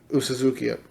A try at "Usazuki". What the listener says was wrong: it's all A's. I think. I don't think there's a U.